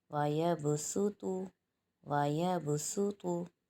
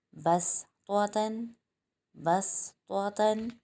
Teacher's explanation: اب یہاں پر سین چھوٹا سا صاد کے اوپر لکھا ہوا ہے، تو یہاں پر صاد کے بجائے ہم سین کی ادائیگی کریں گے، یعنی کہ باریک ادائیگی کریں گے، کیونکہ سین اور صاد دونوں سیٹی والے حروف ہیں، دونوں کا مخرج ایک ہے، لیکن صاد موٹے حروف میں ہے اور سین باریک میں، تو سین کی ادائیگی باریک ہوگی